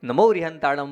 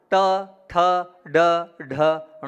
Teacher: जीभ को जब आप पीछे ले जाएंगे वहां से ण का उच्चारण होगा